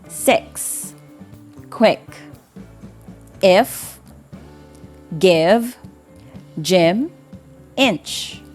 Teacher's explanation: The sound E is a high front lax vowel. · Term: short E sound